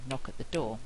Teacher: we're squashing syllables in knock at the door to fit with the Rhythm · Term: stress timed